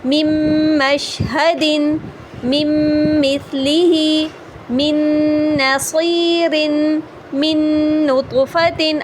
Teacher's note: اب یہ سب ادغام بھی غنہ کے لیٹر ہیں اور ان میں ادغام بھی ہو رہا ہے اور ساتھ میں غنہ بھی رن ہو رہا ہے